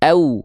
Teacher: Ya, dibacanya lembut antara waw sukun dan ya sukunnya. Pastikan waw sukunnya jangan dibaca ao, bukan vokal o, vokal u. Ya. Pastikan dibacanya au, vokal u, bukan ao.